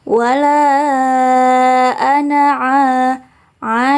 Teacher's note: bacaan mad tabi'i. Jadi harus dibaca panjang 2 harokat.